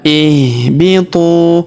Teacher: Huruf tu kita panjangkan dua harakat karena wau sukun di depannya alifnya tidak dibaca.